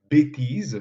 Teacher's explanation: bêtise, qu'on prononce avec « et » fermé, s'écrit avec un accent circonflexe comme s'il s'agissait d'un « et » ouvert.